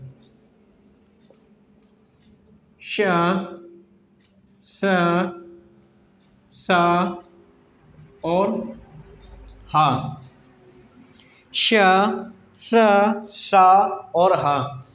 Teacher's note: यह सभी उष्मीय वर्ण महाप्राण होते हैं